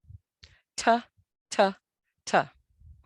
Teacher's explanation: The first letter T is a hard stop, disrupts airflow.